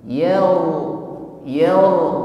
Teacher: ro sukun sebelumnya ada baris fathah maka rnya tebal bunyi getarannya